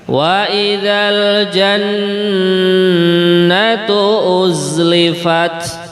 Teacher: Nonnya juga ini berharokat tasdid ya, gunnah 2 harokat